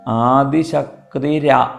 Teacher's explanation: ആദിശക്തിർ ആ എന്ന് കൂടിച്ചേർന്നാൽ അത് ര അഥവാ റ എന്നാവും. അപ്പോൾ ഇവിടെ ആദിശക്തി ര എന്നാണ് അവിടെ ആയിത്തീരുന്നത്.